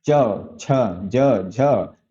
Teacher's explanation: आपकी जिह्वा का जो अग्र भाग है वो आपके तालु को स्पर्श करता है। तो तालु को स्पर्श कर रहा है, इसलिए इसे क्या कहते हैं, इसे तालव्य ध्वनियां कहते हैं।